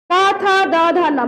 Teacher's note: मेरा जीभ कहीं नहीं जा रहा है ऊपर नीचे दाएं बाएं, जा रहा है दोनों दांत के बीच में, यानी ये दोनों दांत के बीच में, अर्थात यहाँ पे तवर्ग का उच्चारण स्थान दांत है, इसलिए इसको हम कह सकते हैं क्या दंत्य वर्ण।